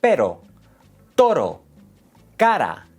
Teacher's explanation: The tongue taps the roof of your mouth. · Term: R suave